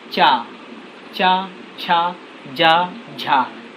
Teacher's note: जीभ जो है तालु को स्पर्श कर रही है, यानी जीभ जो है हमारी वो ऊपर के भाग, मुंह के ऊपर के भाग को स्पर्श कर रही है